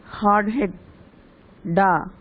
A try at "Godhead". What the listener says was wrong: Godhead should come together. Godhead should come together. D and H should come together.